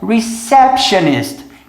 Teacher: repare que tem um som meio que de X depois do P